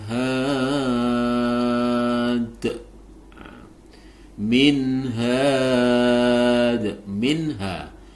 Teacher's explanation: nun sukun bertemu dengan ha maka harus dibaca jelas nunnya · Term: izhar halq